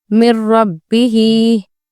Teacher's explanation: इदगाम बिला गुन्ना उस सूरत में होगा जब नून साकिन या तनवीन के बाद दूसरे कलमे के स्टार्टिंग वर्ड रॉ, लाम होगा। यहाँ नून की आवाज़ गायब हो जाएगी और अगला हर्फ वाज़े यानी सुनने में रॉ और लाम प्रोमिनेंट होगा